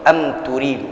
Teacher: mim sukun bertemu dengan selain huruf mim dan ba. Dalam hal ini adalah huruf ta, ya, idhar, jelas, jangan ditahan.